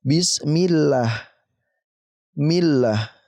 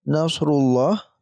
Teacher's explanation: ketika huruf sebelumnya ini berharakat kasrah ya maka kita baca tipis contohnya di sini di atas ada bismillah millah ini tipis dibacanya